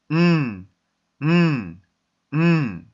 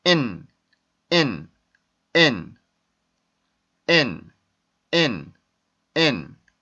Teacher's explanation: 그래서 치조에 혀를 붙이고 음, 음, 이렇게 발음을 해주는데, 코 울림 소리를 여러분들이 잘 기억해서 내 코에 진동이 느껴질 정도로 해주시는 게 좋습니다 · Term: n 발음